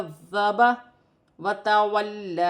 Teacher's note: ذال نرمی والا ہے، مشدد ہے، 2 مرتبہ پڑھا جائے گا کذب وتولی. اور لام پر کھڑی زبر ہے، اسے ایک الف کی مقدار کھینچ کر پڑھا جائے گا.